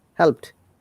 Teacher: If you listen to it carefully, it will listen this sound T, not D.